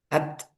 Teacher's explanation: Jadi ee syiddahnya itu 70%, hamsnya 30%. Jadi lebih banyak syiddah ya.